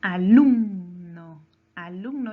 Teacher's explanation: lleva su mayor fuerza de voz en la penúltima sílaba